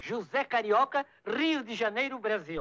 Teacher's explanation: No one from Rio would say “RRRIO” That is clearly an accent from São Paulo.